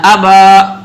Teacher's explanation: با پر الف ہے تو اس کو ایک الف کھینچا ہی جائے گا